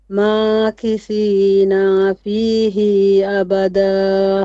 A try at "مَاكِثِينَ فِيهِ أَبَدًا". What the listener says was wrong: Okay, you've stretched the noon and the ha. You said na and he. ماكثين فيه أبدا. فيه أبدا.